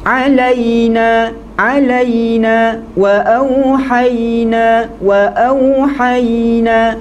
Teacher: Kena sampai kita merasakan huruf ya itu ada pegangan dan rasa kuat pada bahagian tengah lidah. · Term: ya yang mati